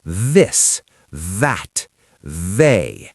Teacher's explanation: It should buzz like a B. Z but with the tongue out. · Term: voiced one